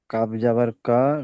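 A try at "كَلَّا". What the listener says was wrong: কাব জবর কা হয় না, ও তাসদিদ আছে লামের উপরে। আলিফ জবর লা। লাম জবর লা হয়, আর লাম আলিফ জবর লা টান দিয়ে পড়তে হয়। যে কবার পড়বেন সে কবার টান দিতে হবে।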